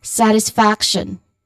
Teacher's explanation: Now the stressed syllable or syllables here would be on the first and third uh third syllables which are sat and um faction f.